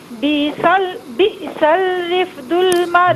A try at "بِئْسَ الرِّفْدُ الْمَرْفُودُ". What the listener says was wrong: بئسل نہیں ہے، بئسر.